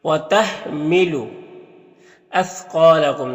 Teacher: سا کی آواز باریک ہوتی ہے اور قاف حروف مستعلیہ میں سے ہے تو اسے پر پڑھیں گے۔ یہاں پر الف سے پہلے قاف کے اوپر زبر ہے تو الف مدہ ہوگا۔